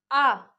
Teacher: सीधे कंठ से बाहर निकलेगा, जिह्वा कहीं भी आपके मुख के उच्चारण स्थानों को स्पर्श नहीं करेगी